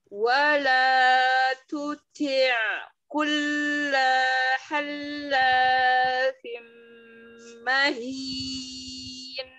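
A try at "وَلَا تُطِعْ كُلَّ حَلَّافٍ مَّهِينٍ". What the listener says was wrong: Hati-hati di situ, kullanya satu harokat. Kulla halla, bukan kulla.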